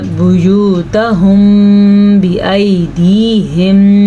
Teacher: اخفاء شفوی کی روح سے جب میم ساکن ہو اور اس کے بعد حرف با آ جائے تو وہاں پہ ہونٹ بند کر دیے جاتے ہیں اور غنہ بھی کیا جاتا ہے